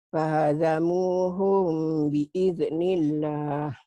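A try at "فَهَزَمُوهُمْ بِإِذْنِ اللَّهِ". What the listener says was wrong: Jangan ada e-nya, biil. Jangan biide, biil.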